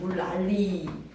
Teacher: 앞이나 뒤에 니은과 리을이 앞이든 뒤든 만나면 리을로